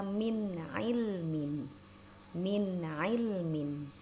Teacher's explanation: nun sukun ya ada nun sukun lalu setelahnya bertemu dengan huruf Ain maka nunnya kita baca jelas ainnya juga kita baca jelas